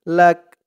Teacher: শেষ থামার কারণে কাফের উপরে জবরটা সাকিন হয়ে যাবে